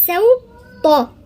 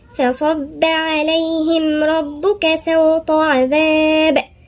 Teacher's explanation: ما نقولش صوتة، لا احنا كده خليناها صاد، لا هي سين. سوطة، لساننا كله مرفوع لفوق، اللي هو طرف اللسان ووسط اللسان وأقصى اللسان في الطاء